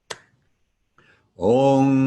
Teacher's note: For those of you who are new to transliterated Sanskrit with the diacritical marks, the dot over the M in Om indicates that we close the back of our tongue up to the soft portion of the back of the roof of our mouth at the same time that we bring our lips together in front. The bar across the A's indicates a long and open version of the vowel sound ah, as opposed to without the bar, which is a short sound ah.